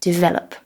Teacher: we want to emphasize the second syllable